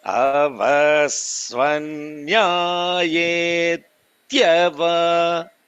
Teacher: I'm holding the ta. I'm not releasing it immediately.